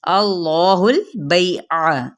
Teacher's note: अब हा की पेच को लाम के साथ मिलाएंगे